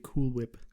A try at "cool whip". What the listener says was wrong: You're not pronouncing the H's hard enough.